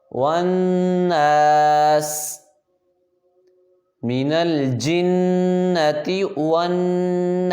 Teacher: واو پہ ہونٹ گول ہوں گے، ون اور نون پہ غنہ ہوگا